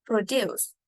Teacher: produce is stress on the second syllable